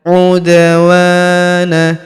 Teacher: huruf da berharakat sukun kita pantulkan atau kita qalqalahkan. Udwana huruf wa kita panjangkan dua harakat karena terdapat alif di depannya.